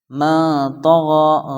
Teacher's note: جیم دال، لاسٹ میں طا یا طا آیا ہے، اس لیے یہاں پر اخفا ہوگا، یعنی ناک میں آواز چھپا کر پڑھنا ہے